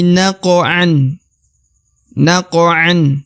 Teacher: maka dibaca fana bihi bihi naqan huruf Q qqalah atau pantul karena dia qof sukun ya maka dibaca naqo harus memantul